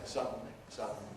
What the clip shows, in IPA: ˈsʌdn̩li